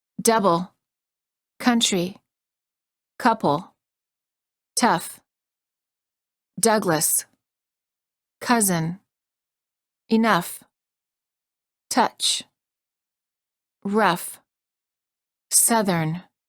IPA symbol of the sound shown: ə